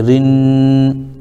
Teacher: بعد حروف شمسی میں سے نون آ رہا ہے، اس لیے الف اور لام کو نہ پڑھیں گے، را کو نون سے ملا دیں گے